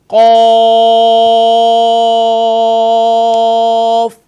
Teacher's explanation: قوف کی ادائیگی بھی بہت ہی آسان، یعنی کہ اس کو ہم ادا کریں گے تو اس سے بھی 5 الف کی مقدار کھینچ کر پڑھیں گے اور اس کا مخرج زبان کی جڑ اور تالو کے نرم حصے سے اسے ادا کریں گے